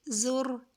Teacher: را کو پر کریں گے کیونکہ را کے پر پیش ہے